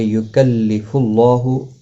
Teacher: لا یکلف اللہ، لا الف مدہ ہے، ایک الف کی مقدار کے برابر کھینچ کر پڑھیں گے۔ یکلف اللہ پیش کی وجہ سے اللہ کا لام موٹا پڑا جائے گا، اس کے اوپر کھڑی زبر بھی ہے، ایک الف کی مقدار کے برابر کھینچ کر پڑھا جائے گا۔